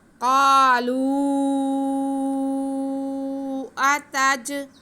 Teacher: قالوا اتجعل کو پڑھنے کے لیے ہم یہاں پہ مد منفصل کا سہارا لیں گے، اسے ہم چار الف کے برابر کھینچ کے پڑھیں گے۔ قالوا اتج، حمزہ پہ زبر، تا پہ زبر، جیم ساکن، جیم حروف قلقلہ میں سے ہے تو اس کو ہم ہلا کے پڑھیں گے، جنبش دے کے پڑھیں گے۔